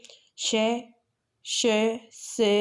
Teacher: इन व्यंजनों के उच्चारण के समय वायु मुख से रगड़ खाकर ऊष्मा पैदा करती है, यानी उच्चारण के समय मुख से गर्म हवा निकलती है।